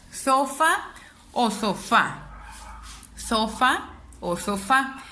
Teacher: más mi voz al pronunciarlo sofá o sofá sofá o sofá me doy cuenta que suena más mi voz en el fa que es una última sílaba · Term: palabra aguda